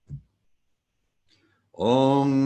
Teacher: So for some of you who are new to transliterated Sanskrit, Sanskrit rendered in the Roman alphabet with marks that indicate the pronunciation cues, the dot over an M indicates we close our lips at the same time that we close the back of our tongue to the back of the roof of our mouth, making a rather round shape with our mouth.